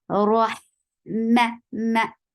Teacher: B, rah, ma is short. For fatha, open your jaws. The sound is very short, and don't bring wrinkle on your lips when you are saying meme.